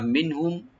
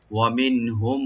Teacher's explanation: মিম সাকিন পরে মিম আসলে এখানে ইদগাম স্বাভাবিক হবে মানে গুণনা সহকারে আমরা দুইটা মিমকে মিলাবো